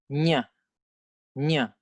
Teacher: The second difference between the Sanskrit main group consonants and the Thai main group consonants is that in Sanskrit, we have a palatal nasal consonant, nya. But in Thai, we don't have this thing.